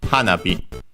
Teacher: This word is a compound, a strictly Japanese compound, accented on the first syllable, in this case, hanabi.